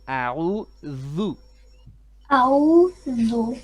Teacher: I think you're saying a'udhu with a za instead of a dhal.